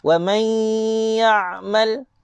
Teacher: Nun mati berjumpa dengan huruf ya juga idgham bi ghunnah, memasukkan dengan dengung.